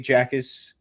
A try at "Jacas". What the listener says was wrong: It's like Akis. J is silent. Akis